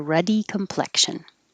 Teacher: this word complexion the x is really a ks combination